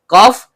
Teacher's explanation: pangkal lidah naik ke langit-langit di atasnya.